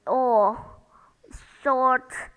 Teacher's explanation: R in girl is not pronounced the second sound or short the r in short is not pronounced either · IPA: ɔ